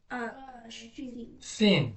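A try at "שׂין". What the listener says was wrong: Sin, Sin. Sin. The one with the dot on the right is the Shin.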